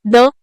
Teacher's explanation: द हा ध्वनी दातांचा वापर करून तयार होणारा मऊ व्यंजन आहे